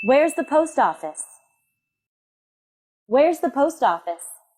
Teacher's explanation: a wh question and its answer have falling intonation that means we should let our voice go down at the end of each sentence